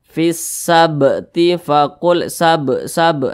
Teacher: Huruf qalqalah ada 5, salah satunya huruf ba. Apabila dia sukun maka dipantulkan. Maka ba ini karena dia sukun maka dipantulkan. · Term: qqalah